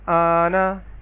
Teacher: ہم کم از کم 3 اور زیادہ سے زیادہ 5 الف کے برابر مد کریں گے